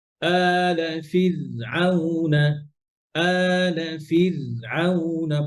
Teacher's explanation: ওই যে আলা আলা ফিরে রটা কলকলা হয়ে গেছে, কলকলা হবে না